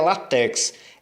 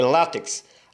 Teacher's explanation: A palavra é paroxítona, a sílaba mais forte é o lá